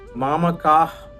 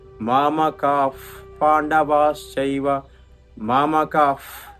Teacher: విసర్గం తర్వాత ప ఫ వచ్చినప్పుడు విసర్గాన్ని పలిగేటటువంటి ధ్వనిని ఉపధ్మానీయం అంటాం. అంటే గొట్టంతో గాలి ఊదేట్లాంటి శబ్దం అని అర్థం అన్నమాట.